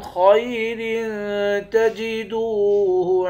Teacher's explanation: را دو زیر رن پہ اخفا کریں گے